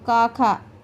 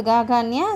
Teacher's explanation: पहला 2 का, खा अघोष है, उसके बाद गा, घा, न्या सघोष है